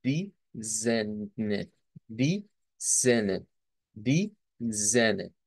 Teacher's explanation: lleva la A con la diéresis, lo que nos indica es que es un sonido como de una E abierta y diríamos di zene, di zene, di zene.